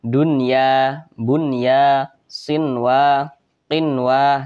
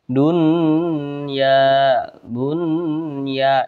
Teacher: jadi dibaca jelas tidak berdengung jadi dibaca pendek saja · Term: izhar mutlak